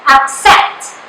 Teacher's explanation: the syllable set is the stress syllable so in pronouncing that you have to give more emphasis to